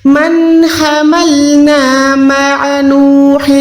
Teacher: مع عین حلق کے درمیان